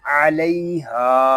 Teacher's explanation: یہاں ہا کو ہم ایک الف تک کھینچ کر پڑھیں گے